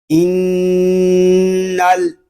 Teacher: نون کو لام کے ساتھ ملائیں گے